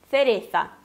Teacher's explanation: fazem a língua entre os dentes, o som parecido com o TH do inglês